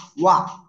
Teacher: ওয়াও জবর ওয়া, ওয়া দুই ঠোঁট গোল হবে। হামজা জাল জের ইজ, ইজ ওয়া ইজ।